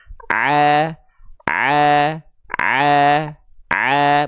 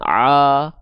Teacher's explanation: fathah dibaca tipis ya, maka vokalnya A. Maka buka mulutnya sedikit senyum. ya. A a a bukan o.